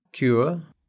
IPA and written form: kjʉːə (cure)